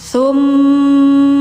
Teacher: didengungkan karena mim itu salah satu huruf gunah musyaddadah.